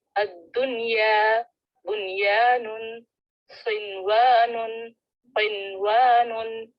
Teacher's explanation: इन चारों कलिमात में गुन्ना नहीं करेंगे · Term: इजहार मुतलक